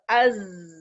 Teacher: تو اس کا مطلب ہے جو سیکنڈ صفت ہے رخاوہ ہے, اور رخاوہ کیا میں نے بتایا, یہ آواز کا نرمی سے ٹریول کرنا مخرج سے